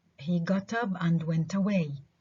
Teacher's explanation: In the groups of words get up and go away are for all practical purposes considered compound words with stress on the second element